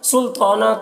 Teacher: سلطانہ تو کو پر پڑھیں گے، حروف مستعلیہ میں سے ہے